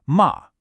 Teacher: And finally the fourth tone ma. It's a sharp decisive falling sound like a command.